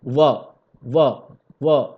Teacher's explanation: ठीक है, उसके बाद निचली होठ तथा ऊपरी दांत, निचले होठ तथा ऊपरी दांत, देखिए व नीचे वाला होठ और ऊपर वाला दांत व